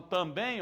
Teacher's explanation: quando eu falo também, ó, sílaba mais forte é o bem. Eu não falo eu também vou.